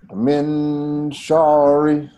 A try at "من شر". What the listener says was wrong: شا is a light letter, not heavy. So من شع or شا light will be شع or شا.